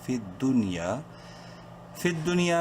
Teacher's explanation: فت دنیا الف زبر یا، الف مدہ ہے، یا کو ایک الف کے برابر لمبا کریں گے